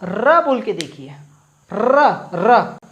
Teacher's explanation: तो आप र बोल के देखिए, र र, तो क्या हो रहा है, वाइब्रेट हो रही है हमारी जीभ, वाइब्रेट हो रही है, ऊपर ऊपर, ऊपर या नीचे, नीचे ऊपर, ऐसी हो रही है वाइब्रेट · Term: लुंठित